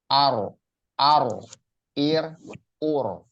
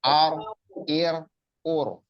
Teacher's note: Ya, kalau ro ingat tadi ya diusahakan ya dilatih kayak orang cadel, setengah cadel gitu. Jadi nggak terlalu bergetar banget ya. Itu cukup dua getaran aja.